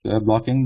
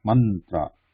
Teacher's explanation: we are blocking the airflow at the back of the teeth with the tip of the tongue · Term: na